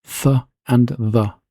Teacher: spirant sounds that are pronounced with a continuous friction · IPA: /θ/ and /ð/, /θ/